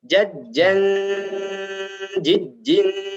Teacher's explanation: Dengungnya masih kurang lama, ditahan 3 ketukan seperti ini.